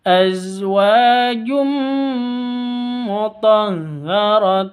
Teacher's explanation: Tanwin bertemu dengan mim. Tanwin bertemu dengan mim, masuk ke mimnya, disertai dengung 2 ketuk karena idgham bi gunnah. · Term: idgam bunah